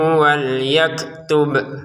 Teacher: jika kita berhenti di sini, kita memantulkan bunyi 'b' (qalqalah)